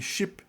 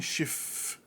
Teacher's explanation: Aí o P final virou F no alemão. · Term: lenição